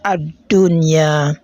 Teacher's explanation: So the lam has been assimilated into the second letter, which is letter dal, which happens to be among the letters of idgham in case of lam ta'rif. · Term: al-idgham